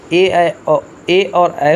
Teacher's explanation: कंठ तालव्य मतलब कंठ और ताल दोनों से बोले जाते हैं, वो ए और ऐ होते हैं